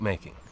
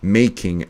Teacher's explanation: it's going to have the emphasis on the make and not the king